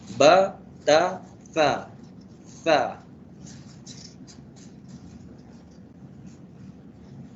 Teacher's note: Nak sebut huruf tha dengan betul ialah dengan meletakkan hujung lidah kita di hujung gigi atas dan bawah.